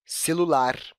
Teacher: a sílaba lar aparece com mais clareza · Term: sílaba tônica